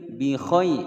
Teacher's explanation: bi khai ada ya sukun sebelumnya fathah, hukum bacaan layyin, tidak dibaca panjang.